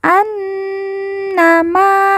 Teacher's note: Nun yang bertasydid kita baca ditekan, ditahan 2 harokat dan didengungkan. An-nama. Ma kita baca panjang 2 harokat karena di depannya terdapat alif.